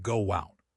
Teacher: To move to out, my lips naturally make a W shape. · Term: invisible W